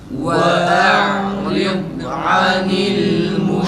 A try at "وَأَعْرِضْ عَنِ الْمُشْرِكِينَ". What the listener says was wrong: Muş değil arkadaşlar. Muşrikin. Bir de dadda kalkara yapmayalım. Hatta bir de şey etmeyelim, acele etmeyelim. İstitare sıfatını düşünün bu arada. وَاَعْرِضْ عَنِ الْمُشْرِكِينَ. Sen muş diyorsunuz ama muş değil. Müşrik o sesi çıkıyor. وَاَعْرِضْ عَنِ الْمُشْرِكِينَ.